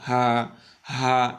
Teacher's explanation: একদম হলকের শুরু যেখান থেকে শুরু হয় গলাটা আমাদের ওখান থেকে একদম খালি জায়গা থেকে